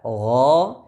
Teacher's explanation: gho gain dibaca dengan tafkhim tebal karena bersifat istilla gho dan huruf ghain perlu diperhatikan tidak sama dengan huruf g